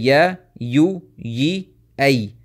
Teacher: These 4 sounds are produced or pronounced from the center of the tongue, the Wasat al-Lisan, and the remaining 1, which is the Ya Madiyah, it is pronounced from the Jawf.